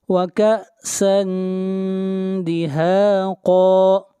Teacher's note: کأسًا اخفاء حقیقی، آواز ناک میں جائے گی